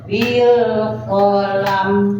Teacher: Alama bil qalam. Bil kolam juga sama alif lam komaria ya. Lamnya ada harus dibaca juga.